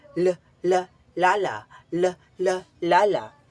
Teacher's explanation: Ang hangin ay lumalabas sa mga gilid ng dila sapagkat ang dulo ng dila ay nakadiit sa punong gilagid. At ang punemang nakapaloob diyan ay ang L. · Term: paggilid